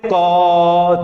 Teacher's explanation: क को लंबे समय तक बोलो, तो आप कहेंगे क, धीरे धीरे ध्वनि किसकी आएगी, अ की ध्वनि आने लग जाएगी। यानी जब हम लोग व्यंजनों का उच्चारण कर रहे हैं, एक लंबा उच्चारण कर रहे हैं, तो व्यंजन जो है क, उसके अंतर्गत क्योंकि अ निहित है, वो बोला जा रहा है अ की सहायता से, इसलिए ध्वनि किसकी आ जा रही है, अ की ध्वनि आ जाएगी।